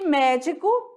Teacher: A sílaba mais forte é a antepenúltima e é classificada como proparoxítona